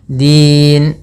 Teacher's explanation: Kemudian pada lafaz din, ini dal, adda. Ya, ujung lidahnya nempel gusi atas. Din atau di antara gusi atas dan gigi sari